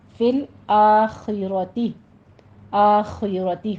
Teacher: آخرتی خو پر پڑھی جائے گی، کسرہ کی آواز باریک رکھیے